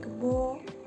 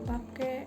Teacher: penggantian diftong au, ai dengan o dan e